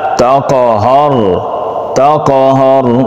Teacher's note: را موٹا پڑھیں گے، ہا کو نرمی کے ساتھ